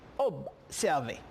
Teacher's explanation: le son sonne comme B, mais ça a tendance un P